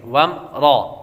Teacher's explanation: وم را غنہ بھی نہیں کریں گے، اور را کو پر پڑھیں گے. را پر زبر ہو تو را کو پر پڑھتے ہیں.